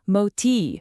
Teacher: For instance, in Hindi, how you say the T sound is absolutely critical. If you say moti with the tip of your tongue curled back, it means fat.